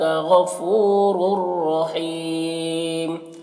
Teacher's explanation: تو تنوین کو را سے ملا کر بغیر غنہ کے پڑھیں گے، اس کو ادغام تام کہتے ہیں۔ اور حیم میں یہاں پر وقف کریں گے تو میم کا جو 2 پیش کی تنوین ہے وہ سکون سے بدل جائے گا، تو پھر یہاں پر مد عارض وقفی ہوگا۔